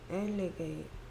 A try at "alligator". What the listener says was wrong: 끝까지 소리를 내야지. 엘리게이는 아닌 것 같고. Alligator 쓰기. 여기까지 소리가 L이고 그다음에 게이 소리 낼 차례네. G. 그다음에 털 소리. 그래서 다 합쳐서 alligator. 그래서 여기에 A는 A 됐고 그 다음에 O가 가진 네 가지 소리